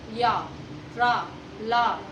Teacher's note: इन व्यंजनों का उच्चारण करते समय हमारी जो जीभ होती है वो तालु से टच होती है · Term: अंतःस्थ व्यंजन